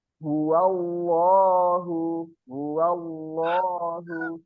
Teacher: Lafaz Allah di situ dibacanya tebal, Allah ya.